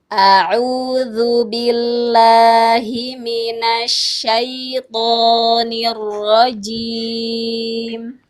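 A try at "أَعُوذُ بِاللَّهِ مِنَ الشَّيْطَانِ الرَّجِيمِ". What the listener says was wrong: Jimnya itu ditahan aja, jangan jim. Kalau jim itu jadi hamas nanti. Nirrajim, jim.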